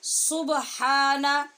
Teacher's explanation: ہا کو اپنے مخرج وسط حلق سے پڑھیں گے